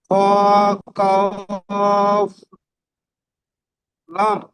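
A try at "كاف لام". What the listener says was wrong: লাম তিন আলিফ টান হবে জি, তিন আলিফ টান হবে, লামটি তিন আলিফ টান দিন, লাম।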